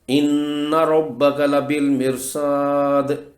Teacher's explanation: وقف پر دال کی زیر جزم میں بدل جائے، یہ بھی وقف بالاسکان ہی کی قسم ہے۔